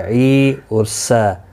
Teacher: عی یا مدہ ہے، سین کے اوپر کھڑی زبر ہے، ایک الف کی مقدار کے برابر دونوں کو کھینچ کر پڑھیں گے